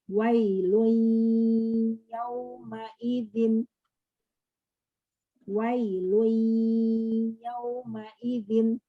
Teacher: Nah, dibacanya harusnya wailun, nunnya nggak dibaca, tapi gunahnya aja. Caranya wailui, kita bacanya wailui ya, tapi ini tidak ada syaddah. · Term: idgham nakis